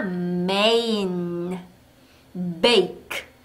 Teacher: 악모음일 때는 A니까 메인 make 하고 읽으시면 되는데 자 앞에이 M 소리를 제가 일부러 길게 내고 있습니다. 메인 하지 않고 음메인 하고음 소리를 추가해서 내고 있어요.